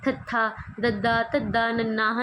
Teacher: ਜੁੜਦਾ ਹ ਦੰਤੀ ਜਿਵੇਂ ਤੱਥਾ ਬੋਲੋ ਤੁਸੀਂ ਤਥਾ ਬੋਲ ਕੇ ਦੇਖੋ ਤੁਹਾਡਾ ਜਿਹੜਾ ਜੀਭ ਦਾ ਅਗਲਾ ਹਿੱਸਾ ਹ ਉਹ ਦੰਦਾਂ ਨੂੰ ਟੱਚ ਕਰੇਗਾ ਫਰੰਟ ਵਾਲੇ ਦੰਦਾਂ ਨੂੰ · दंती, जिवें तत्था बोलो तुसीं, तत्था बोल के देखो, तुहाडा जिहड़ा जीभ का अगला हिस्सा है वह दंदां नूं टच करेगा, फ्रंट वाले दंदां नूं